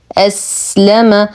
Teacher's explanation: من أسلم، نون ساكنة وبعدها الهمز، الحكم إظهار حقيقي مع غنة ناقصة. أسلم، نصبر على السين فهو حرف رخو مستفل فيه صفير.